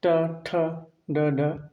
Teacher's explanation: ट, ठ, ड, ढ ये सब मूर्ध व्यंजन है।